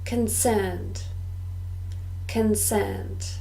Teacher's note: two syllables and we stress the second